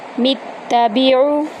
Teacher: میم کو تا میں داخل کریں گے سختی کے ساتھ